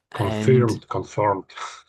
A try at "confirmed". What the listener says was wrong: You said it sort of two ways. Your first one sounds a little bit American and sort of a little bit tricky to say. For the Brits, we just say confirmed, confirmed. So I think it's on the R and the M in the middle. You're overdoing the R a little bit, I would say, but that's okay. Confirmed.